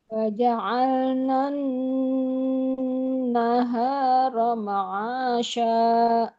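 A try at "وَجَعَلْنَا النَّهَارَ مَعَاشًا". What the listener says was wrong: Oke, lanjut Ibu.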